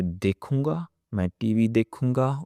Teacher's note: So the difference, when I use मैं, there is a nasal sound.